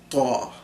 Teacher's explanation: Ta is a really strong, emphatic T, and it's a kind of what I call a plosive, where this burst of air comes out with it